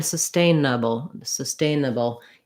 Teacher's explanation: sustain nuble sustainable you're going to have a little schwa bowl is going to basically have no vowel between the b and the l it's a dark l · sustainable has second syllable stress so my stain syllable is going to be long and have the clear vowel and then i'll have my reduced bubble at the end um